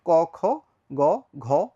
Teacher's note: এগুলো আমরা জানি কেন ঘোষ এবং কেন অঘোষ অঘোষ বলার কারণ হচ্ছে অঘোষ ধ্বনিগুলো ষড়তন্ত্রে কম কাপবে কাপবে কিন্তু কম আর ঘোষ ধ্বনিগুলো ষড়তন্ত্রে বেশি কাঁপবে